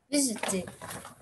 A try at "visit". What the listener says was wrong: No E. You just pronounce it visit. Okay? Just disregard the E.